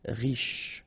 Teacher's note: Final E not really pronounced, so sh is the last sound.